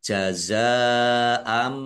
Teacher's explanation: Fathah tanwin bertemu dengan huruf ba, bacaan iklab, dibaca membalik, ya, Fathahnya, fathah tanwin dibaca mim.